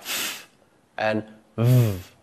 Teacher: Sounds which utilize the bottom lip and the top row of teeth are known as labial dental sounds. The two sounds that are used in this way are the f and v sounds.